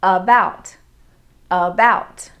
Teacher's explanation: in the word about the a the vowel a forms a schwa sound